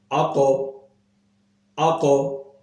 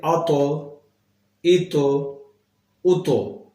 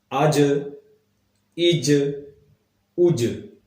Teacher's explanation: جب یہ ساکن ہوتے ہیں تو ان کی آواز دوبارہ پلٹ کر آتی ہے لوٹ کر آتی ہے جنبش پیدا ہوتی ہے